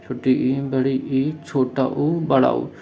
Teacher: हमारा मुख जो होता है लगभग बंद रहता है, हल्का सा खुलता है, तो इसको क्या होता है समृत स्वर बोलते हैं।